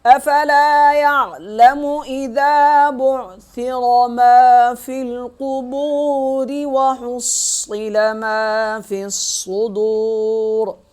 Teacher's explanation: ملائیں گے اگلی آیت کے ساتھ تو را کو باریک پڑھیں گے ، اور اگر وقف کریں گے تو را کو پڑھیں گے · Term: را باریک